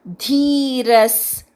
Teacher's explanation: धी दीर्घ आहे, र वर आघात घ्यायचा.